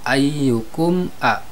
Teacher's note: ketika dibaca huruf mimnya tidak boleh dengung, tetapi harus jelas. Ayyukum a ini juga sama idhar syafawi.